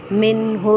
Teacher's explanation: نون ساکن کو ہم ظاہر کر کے پڑھیں گے کیونکہ حروف حلقی میں سے حرف ہا آ رہا ہے